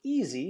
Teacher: the word easy is stressed in the first syllable but we also have an e on the second syllable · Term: e sound